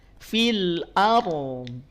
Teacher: Ro-nya naikin pangkal lidahnya.